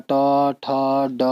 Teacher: जिसमें मूर्धा से उच्चारण होता है वो मूर्धन्य वर्ग कहलाता है